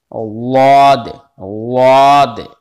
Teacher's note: कनारा जबान आपको दाढ़ से लगाना है तब ये वाद अदा होगा